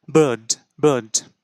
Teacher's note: তো এখানে কিন্তু আর এর উচ্চারণ খুব একটা ব্রিটিশ অ্যাকসেন্টে খুব একটা প্রমিনেন্ট না।